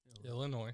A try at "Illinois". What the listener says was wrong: it's illinois there's no noise in illinois